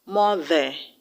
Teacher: the E-R in mother will have to be pronounced as the schwa sound, mother, not mother, mother.